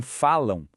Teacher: Mas em falam lá no final da palavra, esse am soa como ão. Percebe? São dois sons, uma vogal nasal e uma semivogal.